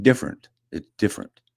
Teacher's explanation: oh, well, you forgot your vowel there, just like other people from Alberta